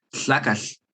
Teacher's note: it is kind of like a T, the plosive sound, happening at the same time that you're having that kind of L sound together. That L sound, your tongue is in the position of an L, but you're not voicing it like an L with your throat.